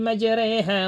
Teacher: Kemudian jika huruf ro dibaca imalah. Imalah ini pengucapan vokal huruf E.